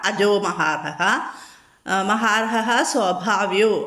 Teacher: വിസർഗ്ഗ സന്ധികൾ ഒന്ന് പറഞ്ഞുതരാം അജഹ മഹാർഹ അജോ മഹാർഹ മഹാർഹ സ്വഭാവ്യോ അവിടെ വിസർഗം കഴിഞ്ഞിട്ട് സ വന്നതുകൊണ്ട് ഹാർഹസ് എന്ന് പറയണം